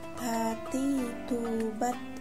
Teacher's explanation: Melafalkan huruf Ta menyentuhkan ujung lidah dengan gusi gigi seri bagian atas dengan mengalirkan sedikit nafas. Ada udara yang mengalir ketika melafalkan huruf Ta.